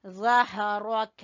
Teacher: क़द ज़हरक, जबान की नोक और सामने वाले दो दांतों के सिरे से। ज़हरक, हा को गले के आखिरी हिस्से से निकालेंगे